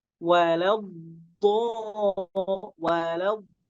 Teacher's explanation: Walau kemudian huruf dotnya tebel dikeluarkan dari mana? Dari lidah bagian samping ditempelkan ke gigi geraham.